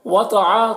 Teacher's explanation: تو کو پر پڑھیں گے، حروف مستعلیہ میں سے ہے